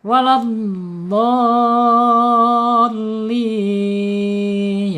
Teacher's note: mad lazim musaqqal kalimi ya, panjangnya 6 harokat